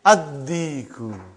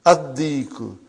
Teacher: You did not pronounce lam because it is sun letter.